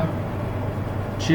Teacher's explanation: छ hard palate और tip of the tongue के साथ प्रोड्यूस होने वाली ये साउंड है। और इसमें हमारी क्या होती है, छ हार्ड पैलेट को हमारी टंग जो है टच करती है, तो ये साउंड प्रोड्यूस होती है।